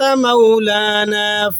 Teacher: انت مولانا فانصرنا على القوم الكافرین، انت میں نون پر آپ نے اخفاء ادا کرنا ہے، مولانا میں واولین ہے، نرمی سے ادا کریں گے، فانصرنا میں نون پر آپ نے اخفاء ادا کرنا ہے اور را کو یہاں پر آپ نے موٹا پڑھنا ہے